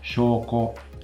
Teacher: I pronounced the first vowel long and the second vowel short, and that's correct